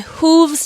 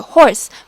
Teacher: hooves just slows down the poem even more because it has a long o sound as compared to horse with a short o sound